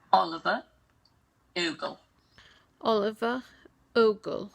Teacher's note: You might notice I don't pronounce the R. That's a non-rhotic R